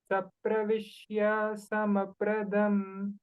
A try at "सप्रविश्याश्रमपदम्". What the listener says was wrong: Shrama padam, not pradam. Shra, not sra.